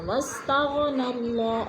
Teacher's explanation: اللہ سے پہلے لفظ بو کے اوپر زبر ہے تو اللہ کو پر کر کے پڑھیں گے